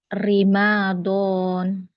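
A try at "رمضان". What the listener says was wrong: Ramadan. Namanya nggak panjang bukan Ramadan, tapi Ramadan.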